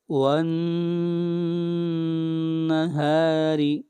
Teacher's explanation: نون کے اوپر غنہ اور را کو باریک پڑھیں گے